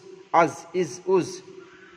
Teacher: জায়ের মাখরাজ জিভের আগা সামনের উপর এবং নিচের, সামনের উপর এবং নিচের দুই দাঁতের আগার সঙ্গে লাগিয়ে উঠতে হয় জা